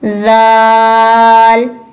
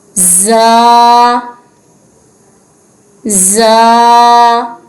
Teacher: ذال اور زا میں فرق، ذال کو جو ہے وہ نرمی سے ادا کرنا ہے اور زا کو سیٹی کی آواز سے۔